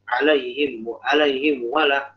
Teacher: Jadi mimnya itu dia mengucapin mim, cuman samar. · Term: ikhfa